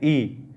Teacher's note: आप देखिए ई बोल के देख लीजिए, ई इसके अंदर मुख है वो न के बराबर ही खुलता है